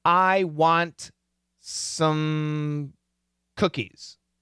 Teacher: especially the word some, is going to have more of a schwa pronunciation. Some.